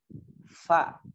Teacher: Nah, fa ini memiliki makhraj ya, di mana bibir bawah dengan ujung gigi seri atas. Jadi desiran nafasnya keluar itu banyak.